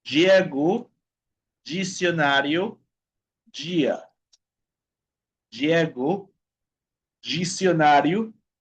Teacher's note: cuando la letra D se encuentra con la vocal I, ¿okay? Con la vocal I. La pronunciación va a ser más o menos de la consonante Y en español.